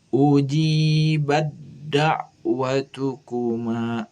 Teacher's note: ta sukunnya masuk ke dal sehingga dibacanya menjadi ujibat da'watukuma. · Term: idgham mutajanisain